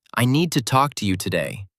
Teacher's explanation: The stressed syllables talk and to carry the power. The other words are lighter. This balance creates a confident flow. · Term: English stress rhythm